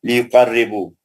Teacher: را پتلا اور مشدد بھی ہے